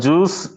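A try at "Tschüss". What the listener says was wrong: D sound ஒரு மாதிரி வரணும். ச சவுண்ட் வரணும். ஜ கிடையாது. சூஸ்.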